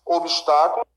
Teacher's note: obstáculo, sílaba tônica é a antepenúltima